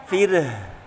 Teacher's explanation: Fir tipis ro-nya fir. Nah, diakhiri dengan huruf yang punya sifat hamas yaitu mengalirkan udara